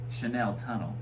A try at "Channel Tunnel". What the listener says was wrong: It's Channel. Chanel is one N, not two N's.